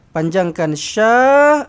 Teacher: panjangkan sya dengan panjangnya 4 ataupun 5 harakat. Okey, dia bertemu dengan hamzah di dalam satu kalimah mad wajib muttasil.